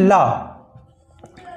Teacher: जो प्राण वायु जो हवा है वो हमारे ये मुंह के पार्श्व, ये जो होते हैं गाल, यहाँ से टकराकर बाहर निकलती है, इसलिए इसका नाम दिया गया पार्श्विक व्यंजन।